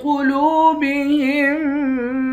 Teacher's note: قاف کو موٹا پڑھیں گے، لام کو واو کے ساتھ ملا کر واو کو بھی ایک الف کے مقدار کھینچ کر پڑھیں گے۔ ہا کو میم مشدد کے ساتھ ملا کر یہاں ادغام مع الغنہ کر کے پڑھیں گے۔